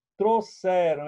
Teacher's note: eu tenho um ditongo na primeira sílaba oral e eu tenho um ditongo nasal na última sílaba